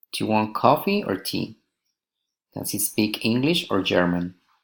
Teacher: alternative questions rising and falling intonation